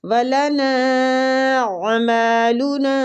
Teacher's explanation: نا پہ جو مد ہے اس مد کو مد جائز منفصل کہتے ہیں، اس کو کھینچنے کی مقدار 3 حرکات ہیں۔